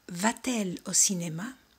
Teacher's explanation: como el verbo acaba en vocal y el pronombre empieza con vocal, elle, colocamos una T para facilitar la pronunciación